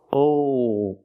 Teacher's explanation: When you make that dark L, the tongue gets tight and makes an extra sound.